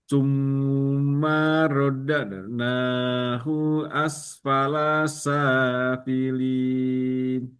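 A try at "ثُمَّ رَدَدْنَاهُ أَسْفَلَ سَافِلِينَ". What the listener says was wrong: Ma-nya pendek saja. Thumma radadnahu asfala safilin. Asfala safilin. Rodad. Nanya dua ketukan saja, tidak terlalu panjang. Rodadnahu asfala safilin.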